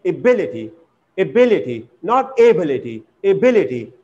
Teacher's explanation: In the same way, when we make noun from this adjective able, then here stress does not fall on the first syllable, but it falls on the second syllable